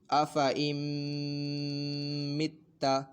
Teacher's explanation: نون ساکن میں غنہ کریں گے، یعنی نون ساکن کے بعد ناک میں لے کے جائیں گے، ایک الف دو حرکات کے برابر کھینچ کر پڑھیں گے۔ · اور یہاں پہ میم مشدد ہے تو میم مشدد میں ویسے بھی غنہ ہوتا ہے